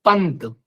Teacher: अनुस्वार मतलब बिंदी, जैसे हम बोलते हैं पंत, तो पा, ना और अंत में है ता, तो ये जो ना का उच्चारण है ये अनुस्वार का उच्चारण है, मतलब नाक से बोला जाएगा